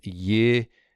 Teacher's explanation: Now, this helps if you pronounce a vav with classical pronunciation as a wow, because what you get here is a contraction that is ow to o. That's how we end up with yikonu, with this o sound right here.